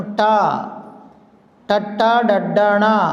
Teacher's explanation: మనము ట టట్ట డడ్డాణ పలికేటప్పుడు మన నాలిక ఎక్కడ పైన తాకుతుందో దాన్ని మూర్ధము అంటారు